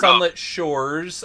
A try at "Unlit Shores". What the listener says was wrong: Unlit. Not sunlit.